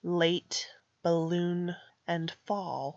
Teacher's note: her lips are not rounded she just has her tongue behind her teeth